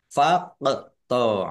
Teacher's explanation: qaf sukun bacaan qalqalah, dibaca memantul, ditampakkan pantulannya. Faqta'u, ain domah wawu sukun mat tabi'i, tetapi karena bertemu dengan huruf alif di kata yang berbeda, maka menjadi mad jaiz munfasil.